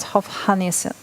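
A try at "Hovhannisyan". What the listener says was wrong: You don't pronounce the H, I guess. Hovannisan. should just get rid of the H's. Like it's a very British thing anyway. Get rid of the H's. Hovannisan.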